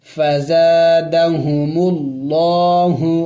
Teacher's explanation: لفظ اللہ سے پہلے جب زبر آ جائے، پیش آ جائے تو اس وقت لفظ اللہ کو موٹا پڑھا جائے گا